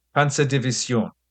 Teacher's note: It should be pronounced as nasally as possible, with a soft S and the stress on the final syllable